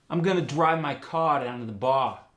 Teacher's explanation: the r sound goes to ah